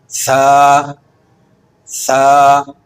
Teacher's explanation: زبان کی نوک ثنایا علیہ کے کنارے سے لگے